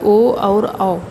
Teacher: ओ औ का उच्चारण स्थान क्या है? कंठ और ओष्ठ है, कंठोष्ठ हो।